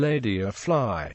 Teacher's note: the alveolar lateral approximant with a neutral position of the body of the tongue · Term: clear L